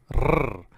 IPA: r